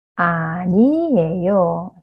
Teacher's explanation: so ' 안이에요' just make it smoother '아니에요' so this 'ㄴ' sounds move on to the next syllable